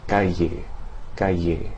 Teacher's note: The most common pronunciation of double L is a sound similar to the Y in the English word yo-yo, although usually with slightly more friction.